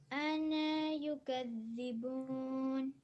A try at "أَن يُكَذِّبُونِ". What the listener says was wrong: So we would skip the noon in that case. So it would be أن يكذبون.